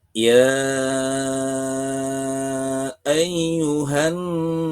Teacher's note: Warna biru dalam pembacaan frasa ya ayyuha adalah mad jaiz munfasil. Cara melafalkannya adalah dengan memanjangkannya selama lima ketukan.